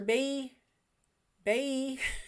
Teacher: he calls her bae bae no l in it